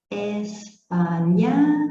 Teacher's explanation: Oxítonos, última sílaba mais forte